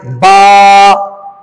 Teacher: दोनों होंठ को मिलाएंगे